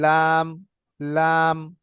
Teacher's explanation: লামটা হচ্ছে জীবের আগা আর আমাদের সামনের দাঁতের মাড়ির সঙ্গে লাগিয়ে পড়তে হয়।